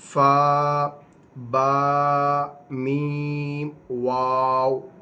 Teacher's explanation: فا اوپر کے دانتوں کے کنارے اور نچلے ہونٹ کے تر حصے سے ادا ہوگا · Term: حروف شافویہ